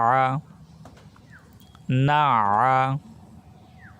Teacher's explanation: নুন আইন জবর না, আইন কণ্ঠনালীর মাঝখান থেকে উচ্চারিত হবে